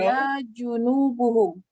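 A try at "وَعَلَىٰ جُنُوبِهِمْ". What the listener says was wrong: Sudah jelas-jelas dibaca ala. Wa ala. Wa ala junubihim. Ini dikasih baris bawah ini. Junubi.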